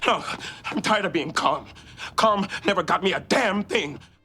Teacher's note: he fights to empower his voice by dropping it deeper, but with his shortness of breath, it comes out as a painful rasp.